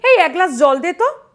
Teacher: গ্লাস এখানে কিন্তু আমরা আর স্বরধ্বনিটা উচ্চারণ করি না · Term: যুক্তধ্বনি